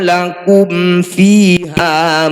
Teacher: Ini disebut bacaan izhar syafawi. Bunyi mim sukun dibaca jelas, tidak usah dengung.